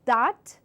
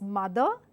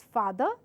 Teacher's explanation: this is your dh sound, which has a vibration which is more on a heavier side, and hence it gives this vibrating sensation each time when you give out a dh sound, dh.